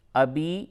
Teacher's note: ابی یا ساکن سے قبل جب زیر ہو تو وہ یا مدہ ہوتا ہے، اس کو تھوڑا سا کھینچ کر کے پڑھتے ہیں، تو اسے تھوڑا سا کھینچیں گے، زیادہ نہیں کھینچیں گے، تھوڑا کھینچیں گے۔